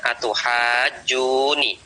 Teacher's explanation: Ya, Imam Nafi' dan juga Ibnu Amir membaca tuhajjuni dengan mentakhfif nunnya, meringankan nunnya. Jadi nunnya tidak ditasdid.